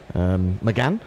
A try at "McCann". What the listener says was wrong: You said McGann.